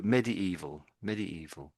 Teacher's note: So, maybe there's a slight, emphasis on the evil bit there